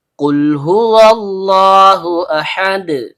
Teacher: Lam ujung lidah bertemu langit-langit bagian depan.